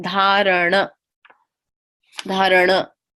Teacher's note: It's a retroflexed N. Said at the back of the mouth.